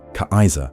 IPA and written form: ˈkaɪzɐ (Kaiser)